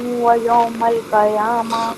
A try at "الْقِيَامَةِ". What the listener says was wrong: قیامہ نہیں، قیامہ. قاف کے نیچے زیر ہے، قاف کے نیچے زیر ہے. قیامہ نہیں میری بہن، قاف کے نیچے زیر ہے، قیامہ.